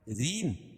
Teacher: را باریک ہوگی، کیونکہ را کے نیچے زیر ہو تو را باریک ہوتی ہے، اور یا ساکن سے پہلے را کے نیچے زیر ہے تو یا مدہ.